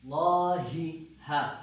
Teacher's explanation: ہا جو آپ کے سینے کی طرف سے ادا ہوتا ہے